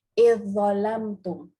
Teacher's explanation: Dia masuk terus dalam. Masuk terus zal ni dalam za.